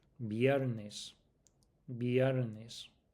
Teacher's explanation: the v sound in Spanish, that it's half a b, half a v, much more almost a a b sound.